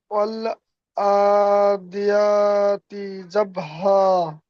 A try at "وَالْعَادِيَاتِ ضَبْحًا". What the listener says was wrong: জবহা হয়ে যাচ্ছে ضبحا. والعاديات ضبحا.